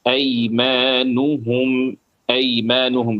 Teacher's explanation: نون اور ہا دونوں پر ضمہ پیش آ رہا ہے ایک کے بعد ایک، تو اس میں اور خاص طور سے آپ کو دھیان دینا چاہیے، توجہ دینا چاہیے کہ ہونٹ برابر سے گول ہوں ۔ آپ کے وہاں پر ہونٹ ٹھیک سے گول نہیں ہوئے